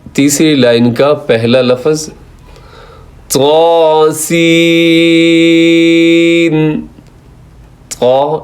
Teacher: سین کے اندر سیٹی بھی ہے، اس کو لمبا بھی کرنا ہے